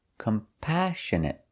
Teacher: We put the stress on the second syllable,